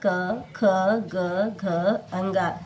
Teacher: जब हम ये पांचों वर्ण बोलते हैं तो इसका उच्चारण कंठ से होता है।